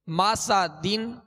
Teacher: सीन को सख्ती के साथ, इसमें सीटी की आवाज़ पैदा होगी, और दोनों जबर जो मीम और सीन पर इसकी अदायगी के वक्त आवाज़ और मुंह दोनों खोलेंगे।